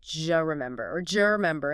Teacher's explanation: What happens is assimilation and reduction combined. The D sound at the end of do and the J sound like Y in yes at the beginning of U often merge together. · the vowel in U often reduces to schwa or disappears